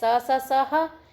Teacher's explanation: ये ऊष्म भी है और महाप्राण भी है